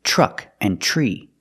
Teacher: We put the TR together to make the sound ch, like in truck and tree.